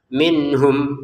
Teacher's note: nun sukun bertemu ha baca dengan jelas